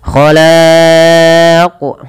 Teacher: ada qalqalah pada lafal huruf qaf dan wajib dipantulkan sebagaimana huruf dal